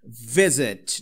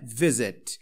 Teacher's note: Então começa lá em cima a pronúncia e cai, né?